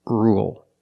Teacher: now let's talk about rule with rule we don't say rule there's no y it's just R dark L